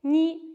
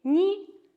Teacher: So here ni is a little high, which means that the sound goes a little bit towards the upper palate. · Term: high tone